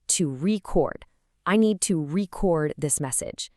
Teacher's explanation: We stress the second syllable and boom, it's a verb.